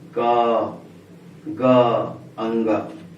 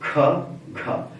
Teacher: पहली, तीसरी और पांचवी के उच्चारण में मुंह से कम हवा निकलती। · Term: अल्प प्राण